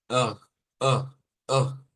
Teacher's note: a la R fuerte también se le conoce como R gutural. Ugh, ugh, ugh. Viene en la garganta, la fuerza.